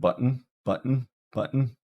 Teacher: trapped behind the glaus like where your vocal folds are like the vocal folds are shut tight air is trapped behind and then it's released · It's that little space where you're not really pronouncing anything. Basically, air is getting trapped behind the glottis, like where your vocal folds are. · it's a little bit hard to hear the glottal stop because basically it's no air coming out.